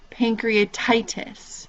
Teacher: you hear that tie part that's kind of the where the emphasis of the word lies